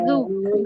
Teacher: जाल का मखरज जो है हमें मखरज से अदा करना है ना जुबान की नोक और ऊपर के दो दांतों के किनारे से अदा करना है जाल से बहुत नरमी से अदा होगा।